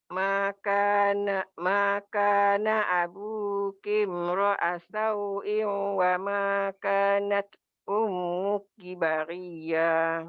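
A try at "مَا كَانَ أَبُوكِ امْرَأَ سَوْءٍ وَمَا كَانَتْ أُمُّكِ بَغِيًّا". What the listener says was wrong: Bagus. Terus.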